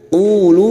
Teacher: Qulu masing-masing dua harakat kita panjangkan. Mat tabi'i dhamma diikuti wawu sukun.